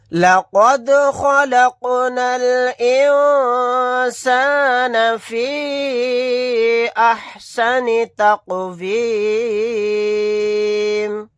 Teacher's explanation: نون ساکن کے بعد سین آ گیا، یہاں پر اخفا کا قاعدہ ہوگا، نون کی آواز کو ناک میں چھپا کر پڑھیں گے